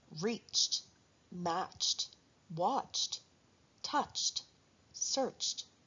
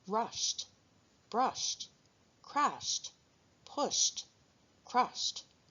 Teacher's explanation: verbs ending in unvoiced sounds will have an ending that sounds like t.